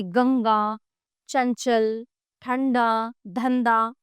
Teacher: इस ध्वनि का उच्चारण केवल नाक से होता है। इसका उच्चारण न या म के समान होता है। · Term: अनुस्वार